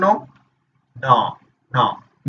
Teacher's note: एक बार आप नाक बंद कर लो, फिर बोलना नो, ना, ना, नौ का उच्चारण ही नहीं हो पाएगा क्योंकि उस समय आपके नाक से हवा निकल रही होती है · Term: अनुनासिक